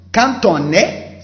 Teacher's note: between quand and on, you have the liaison. Even the D becomes like T sound, te. So you say quand on, not quand on.